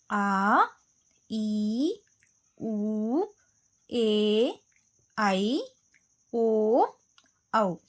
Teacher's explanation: ದೀರ್ಘ ಸ್ವರ ಎರಡು ಮಾತ್ರಾ ಕಾಲದಲ್ಲಿ ಉಚ್ಚರಿಸಲ್ಪಡುವ ಅಕ್ಷರ